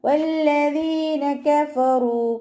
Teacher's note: റോ വൊമ്മയായതുകൊണ്ട് നമ്മൾ ഉയർത്തിയിട്ട് ഉച്ചരിക്കും